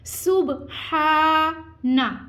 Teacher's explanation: ہا کو ٹھنڈی سانس کے ساتھ ادا کرتے ہوئے ہم نے اس کو کھینچنا ہے